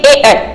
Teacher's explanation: अगला पढ़ेंगे आप, यहाँ पे कंठ और तालु, ये आई है यहाँ पे, ए आई में देखिएगा कंठ तालु, क्या रहेगा ये, कंठ और तालु, माने ए आई को बोलने के लिए कंठ तो है ही, साथ में तालु की भी सहायता लेनी पड़ेगी।